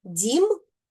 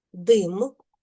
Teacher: В слові дім перший звук дь. ми вимовляємо м'яко, а в слові дим перший звук д ми вимовляємо твердо.